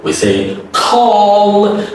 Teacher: the dark L dark is pronounced with the same mouth position but you add another voice that is aw